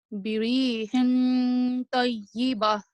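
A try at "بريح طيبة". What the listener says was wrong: See, much better.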